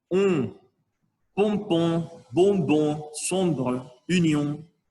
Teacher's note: Quand on dit camion, il faut faire sonner le O dans le nez